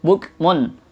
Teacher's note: dhammatain bertemu dengan huruf ain, ini namanya izhar